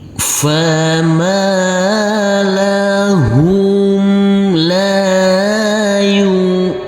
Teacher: selanjutnya untuk huruf nun ini kita baca dengan enam harakat